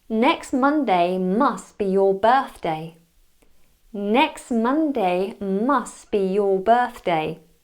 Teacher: so I missed out both of those final T's